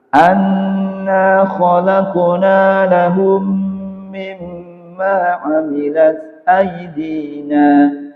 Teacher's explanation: Meskipun ada tanda panjangnya aidina, itu kalau wakaf juga dibaca pendek.